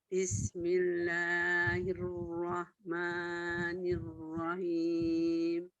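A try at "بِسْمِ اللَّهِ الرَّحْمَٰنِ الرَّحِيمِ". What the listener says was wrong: Ya, masih agak samar ya pengucapannya gitu, jadi ayo. Nah, la-nya juga terlalu panjang. La itu 2 harokat saja, tidak boleh lebih ya. Bismillah, 2 harokat saja. Bismillahirrahmanirrahim.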